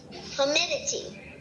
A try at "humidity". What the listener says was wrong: You've got the end, but that first syllable. Cover up everything but the first syllable. H-Y-O-O. That means you would say it exactly how that's spelled. Hue. So what they're saying is Y-O-O means that U has a long U sound.